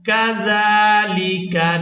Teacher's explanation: زال کو ادا کرتے ہوئے سیدھی کی مثل آواز پیدا نہیں ہونی چاہیے، زال کو کھڑی زبر کی وجہ سے کھینچ کر ادا کریں گے